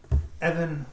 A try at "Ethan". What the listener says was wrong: I think you're Mis pronuncia it's not Evan it's Ethan